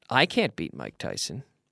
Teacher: expect that we can't so we don't stress it we don't we don't stress the negative in this case